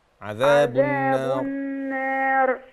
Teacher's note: الراء تفخم، عذاب النار عشان وقفنا